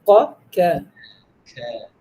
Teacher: suara pada huruf Kaf mengalir merayap di atas lidah langsung keluar mulut hal ini mengakibatkan suara terdengar begitu ringan dan tipis